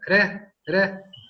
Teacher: tenemos una vibrante simple como la R, re, que es una pequeña vibración